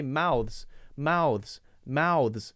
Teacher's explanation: Then you jump between them. You slide your tongue back from the TH to the Z sound.